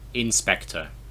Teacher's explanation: we emphasize the second syllable in english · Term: stress